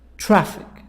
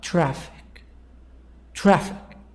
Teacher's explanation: two syllables traffic this part this word two parts two syllables we stress on the first part the sound is higher louder longer